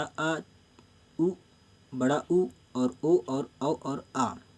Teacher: यानी इन शब्दों को बोलने के लिए जीभ का आखिरी भाग यानी बड़ा आ, उ, बड़ा उ और ओ और औ और आ, ये बोलते हैं हम लोग जीभ के आखिरी भाग यानी बैक वॉवेल से